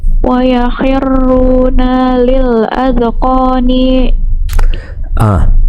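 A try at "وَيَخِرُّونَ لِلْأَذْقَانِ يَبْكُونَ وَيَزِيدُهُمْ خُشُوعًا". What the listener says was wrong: Akhir ayatnya, maaf, akhir hurufnya jangan dipanjangin kalau nggak panjang. Wa yakhirruna lil adqani yabkun. Nah, nanya dibaca panjang barusan. Masih panjang ninya nggak pakai mat.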